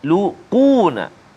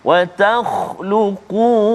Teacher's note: Quna huruf qaf yang baris dhammah tebal juga